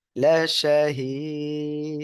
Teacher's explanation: তিন আলিপ টেনে পড়বো আর কলকলা হবে